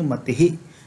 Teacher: यहाँ पर विसर्ग जो है वह ई के बाद है तो इसका उच्चारण ही से मिलता जुलता होगा।